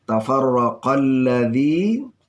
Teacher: ada alladzi, ya, yang tidak terbaca alif lamnya. Ini namanya ma alif lam syamsiyah.